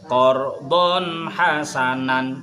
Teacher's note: nun mati atau tanwin yang bertemu huruf halak dibaca jelas tanpa mendengung